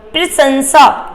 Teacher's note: ये लास्ट वाला जो सा आएगा वो आपका दंत वाला सा आएगा